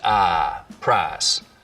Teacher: price smoothing in much of the South, so that I smooths out to just ah, price.